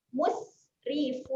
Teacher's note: Huruf sin ketika mati dia ada keluar angin.